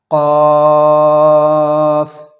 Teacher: جتنا آپ نے با اور تا کو کھینچ کے پڑھا تھا اتنا ہی فا کو کھینچ کے پڑھیں گے. قاف کا مخرج ہے زبان کی جڑ کی ابتدا اور اس کے مقابل اوپر کے تالو سے ادا ہوتے ہیں. قاف، زبان کی جڑ کی ابتدا جہاں سے شروع ہو رہا ہے اس کے مقابل اوپر کے تالو سے ادا ہوتے ہیں اور موٹی آواز سے پر پڑھا جاتا ہے.